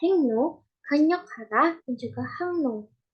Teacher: jika bunyi Eng bertemu dengan bunyi R maka bunyi R akan menjadi Bunyi nasal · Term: nasalisasi R